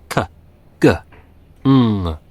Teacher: velar, using the back of the roof of the mouth.